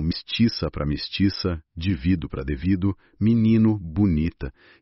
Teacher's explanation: o alçamento das vogais médias átonas, o E e o O, que viram I e U quando não são tônicos